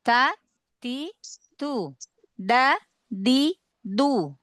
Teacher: Kalau ta dengan dal sama posisi lidahnya ya, karena dia sama-sama huruf tipis. Makhraj ujung lidah sama huruf ta dengan dal yaitu ujung lidah bertemu dengan atau menempel dengan gusi tempat tumbuh gigi seri atas. · Makhraj ujung lidah sama huruf ta dengan dal yaitu ujung lidah bertemu dengan atau menempel dengan gusi tempat tumbuh gigi seri atas. Lalu pangkal lidahnya tidak na tidak naik.